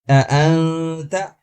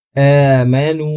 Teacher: ایک کے بعد دوسرا حمزہ الگ الگ ادا ہوگا، لیکن دوسری مثال میں حمزہ کے بعد الف ہے تو ہم کھینچ کر پڑھیں گے